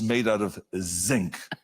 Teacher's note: they say the vibrating Z we don't have that in German